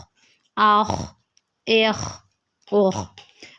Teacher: جو منہ کی طرف حلق ہے نا، اس سے آواز نکلے گی